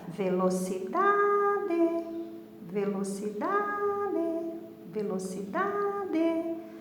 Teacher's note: porque a penúltima sílaba é mais forte · Porque a penúltima sílaba é a mais forte. Eu não posso ler assim, ó, velocidade, velocidade, porque daí o D seria o mais forte, mas fica incorreto, ó. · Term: paroxítona